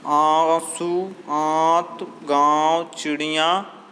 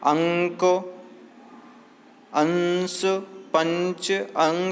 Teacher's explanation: अनुस्वार के उच्चारण में नाक से अधिक सांस निकलती है और मुख से कम